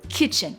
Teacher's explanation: the first syllable has a little bit more emphasis than the rest of it